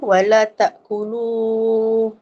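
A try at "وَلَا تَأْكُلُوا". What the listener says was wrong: oh kena panjang lagi eh tak cukup panjang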